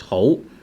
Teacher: This is the rising tone, second tone.